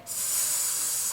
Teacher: S의 소리는 스 하는 발음인데 목에 손을 대고 스 하고 발음하면 목이 울리질 않죠. 그래서 이 아이는 울리지 않고 목이 울리지 않고 바람만 나온다고 해서 새는 소리라고 불러요.